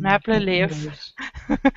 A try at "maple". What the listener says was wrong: Maple. Not map, but May. Maple.